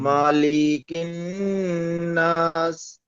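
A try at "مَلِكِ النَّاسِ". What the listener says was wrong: আপনি কোথায় ভুল পড়েছেন জানেন? আপনি দু জায়গায় ভুল পড়েছেন। সেটা হলো এ মায়ে টান দিয়েছেন, লামও টান দিয়েছেন, টান নেয়, ঠিক আছে?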